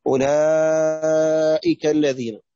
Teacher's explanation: أولئك دي مد واجب متصل مقداره ألفان أو أربع حركات إلى خمس حركات